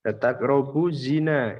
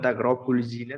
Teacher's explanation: Keterangannya ada alif lam mati yang bertemu dengan salah satu huruf samsyah. Dibaca lebur sehingga bunyi al tidak ada. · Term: alif samsyah